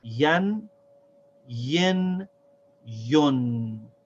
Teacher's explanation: It's the same sounds as the short vowels, except we add a noon sound at the end of every vowel sound. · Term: tanween